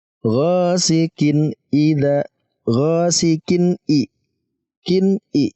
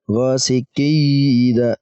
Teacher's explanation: antara tanwin dan hamzah keduanya jelas, tidak didengungkan